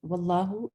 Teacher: لام جلالہ آپ کا فل ماؤتھ پڑھا جائے گا